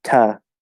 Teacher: to is this tiny little word. It's very, very rarely stressed. In fact, it's usually reduced to ta.